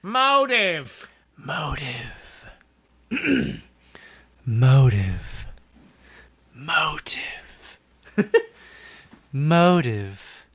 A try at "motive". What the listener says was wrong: Because you're doing it too wispy. Should make it like a fat